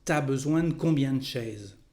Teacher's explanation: you know that there is a contraction between tu and a to say ta · the sound E in French disappears when we speak